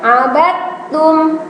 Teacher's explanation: dalnya hilang tapi langsung masuk ke huruf ta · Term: idgham